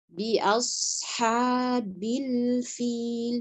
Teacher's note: huruf ba kasrah diucapkan dengan betul-betul mengatupkan bibir tidak bi bi tidak ngambang kemudian harakat kasrah jelas sekali i bunyinya tidak boleh bel bel tidak bil tidak juga bil fil tidak bil fil kemudian huruf lam sukun sempurnakan sifat tawassut.